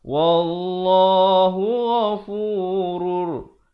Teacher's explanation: bila datang ra hukumnya masuk tanpa dengung, idgham bila gunnah.